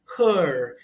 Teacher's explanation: Se pronuncia her. É o schwa em inglês.